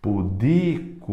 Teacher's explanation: Ela é paroxítona. Pudico, o di é mais forte.